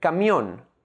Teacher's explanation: The last syllable ‘MIÓN’ is the stressed syllable.